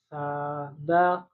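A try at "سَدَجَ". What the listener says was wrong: Masih panjang. Sadaja, jangan dipanjangin.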